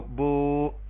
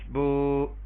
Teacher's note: واو ساکن سے پہلے پیش، اس کو واو مدہ کہیں گے اور اس کو ایک الف کے برابر لمبا کریں گے، با پیش واو بو، اور اس کی جگہ پہ کھڑی زبر بھی اپنا الٹا پیش بھی استعمال کر سکتے ہیں، با الٹا پیش بو۔